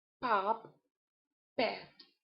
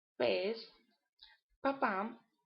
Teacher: The sound is voiceless in both languages, but in English it is more plosive than in Spanish.